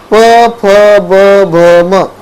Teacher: यांचा उच्चार आहे ना तो तुला ओठ मिटून करावा लागतोय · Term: ओष्ठ्य